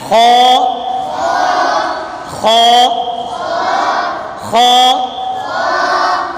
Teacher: یہ حلق کے اوپر والے حصے سے ادا ہوتا ہے، یہ اوپر والا حصہ ہے، اس سے خو ادا ہوتا ہے۔